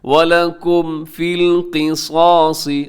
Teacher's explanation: میم ساکن کو ظاہر کر کے پڑھیں گے اور یہاں غنہ نہیں کریں گے، یہاں پہ ٹھہریں گے نہیں. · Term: اظہار